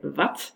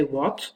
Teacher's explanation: It can either be labiodental approximant in the biggest part of the country where you say wat, and in the south, it's actually bilabial. It's rounded, and you say what.